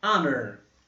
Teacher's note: O schwa de novo aparecendo aqui, representando a letra O.